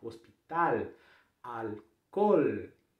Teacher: Quando termina a palavra, você não vai dizer o som do U, como a gente faz em português. Álcool ou hospital, em espanhol, leva a língua lá nos dentes superiores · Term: o L corretamente